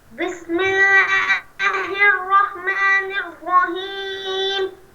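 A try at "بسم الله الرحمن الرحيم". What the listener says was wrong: الرحیم ہا کو صحیح کر کے پڑھو. بسم اللہ الرحمن الرحیم.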